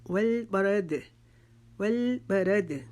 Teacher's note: موٹا پڑھنا ہے کیونکہ را کے اوپر زبر آ رہی ہے، دال کے اوپر پھر ہماری آواز اپنے گلے میں واپس لٹائیں گے جس کو کلکلا کرنا بولتے ہیں